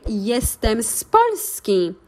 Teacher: we do a phonetic liaison of the zed with the next words so we don't really pronounce it yes we kind of join